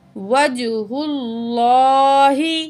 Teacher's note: اور لام کے اوپر کھڑا زبر ہے، 1 پوائنٹ کھینچ کے پڑھیں گے